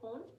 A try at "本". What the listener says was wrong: The typical foreign accent is that to pronounce it as one syllable word. But in Japanese, it has two moras. It's number one ho and number two It's not hon. Maybe it's the difference is very subtle.